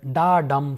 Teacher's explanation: the line has an unstressed syllable followed by a stressed syllable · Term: iamb